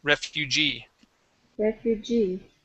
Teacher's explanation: the word is refugee okay stress at the end